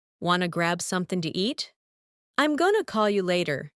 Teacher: want to becomes wanna. Going to becomes gonna